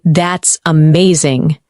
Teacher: When you say, that's amazing, your tone rises with excitement.